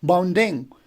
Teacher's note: Bounding, bound would be stress, ding would be unstressed.